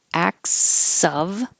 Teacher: you don't really have to make a good V, acts of service, because the next sound is voiceless with the S, so it could just disappear